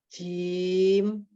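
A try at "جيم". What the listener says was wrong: Jim, bukan zim. Jim.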